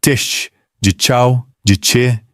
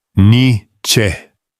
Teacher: É uma africada, feita na frente da boca, com a língua atrás dos dentes. Não há absolutamente nada acontecendo na garganta.